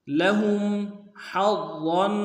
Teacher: لہم حظا، حا کو ضا کے ساتھ ملانا ہے، ضا کو موٹا ادا کریں گے اور ضا کے اوپر تشدید زور دیں گے